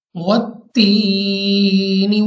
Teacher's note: वाव connected है, वाव मिला हुआ है ता के साथ, तो हमने इसको थोड़ा सख्ती के साथ मिला के ता को दोबारा पढ़ना है, क्योंकि यहाँ पे एक रूल्स एक कायदा मैं आपको बताता चलूँ कि मुशद्दद हरूफ को 2 मरतबा पढ़ते हैं।